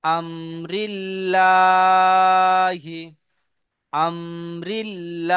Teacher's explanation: আর লামের উপরে খা জবর এসছে, আল্লাহ শব্দের লাম মুসাদ্দাদের আগে, আল্লাহ আল্লাহ শব্দের শব্দ লাম মুসাদ্দাদের আগে জের এসেছে, তাই আল্লাহ শব্দের লাম মুসাদ্দাদকে, আল্লাহ শব্দের লামকে বারিক অর্থাৎ লা পড়তে হয়